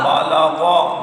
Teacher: آگے پڑھیے با صبر با، لام صبر لا، بالا، غین صبر غا، بالا غا، غین کو پر پڑھیں گے، مستعلیہ ہے